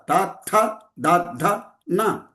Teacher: तवर्ग दंत से आता है